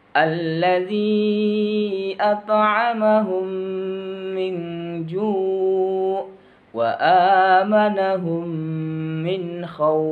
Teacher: tadi mimpi tidak tertutup rapat kalau idgham mislain atau idgham mimi huruf mim ia pada saat dilafadzkan bibirnya tertutup rapat